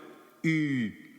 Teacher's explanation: ipsilon stands for an e sound formed with the lips rounded